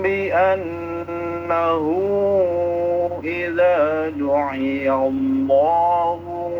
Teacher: lafaz Allahnya dibaca tebal karena sebelumnya fathah